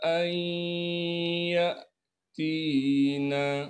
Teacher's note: इदगाम के क़ायदे से नून साकिन के बाद हरूफ यरमलून में से या आ गया है, लिहाजा इस नून को या में मुदगम कर देंगे।